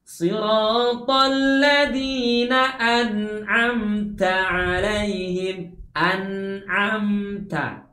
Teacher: Padahal seharusnya nun dan mim dibaca dengan suara mengalir, ya. Pastikan ujung lidah kita tertahan ya di langit-langit pada saat menyebutkan an